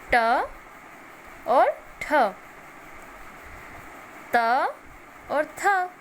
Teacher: श्वास, अघोष में वर्ग के पहला दूसरा वर्ण का प्रयोग होगा।